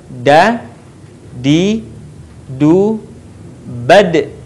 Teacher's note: Huruf da keluar dengan cara menyentuhkan ujung lidah kita ke gusi bagian atas sebagaimana kita melafalkan huruf ta. Dalam keadaan mati, huruf da terdengar suaranya memantul.